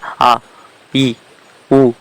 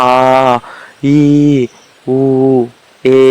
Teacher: ஷார்ட்டா ஒலிக்கிறது எல்லாம் ஒரு மாத்திரை கொஞ்சம் நீட்டு ஒலிக்கிறது எல்லாம் ரெண்டு மாத்திரை